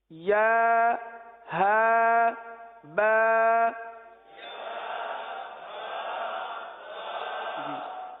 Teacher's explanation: یعنی ایک حرف ادا کریں، تھوڑا سا رک جائیں، اگلے حرف کو اس کے مخرج سے ادا کرنے کے لیے یہ رکنا ہوا، کیونکہ یا جو ہے یہ وسط لسان، وسط تالو، زبان کے درمیان اور تالو کے درمیان سے ادا ہوتا ہے، اور ہا جو سینے سے متصل حلق ہے یہاں سے ادا ہوتا ہے